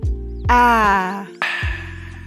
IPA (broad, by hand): æ